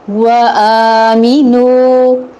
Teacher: واو پہ ہونٹ گول ہوں گے، آ حمزہ ہے، محقق ادا ہوگا، کھڑی زبر ہے، یعنی قائم مقام مد اصلی ہے، قائم مقام مد اصلی ہے، ایک الف کے برابر لمبا ہوگا۔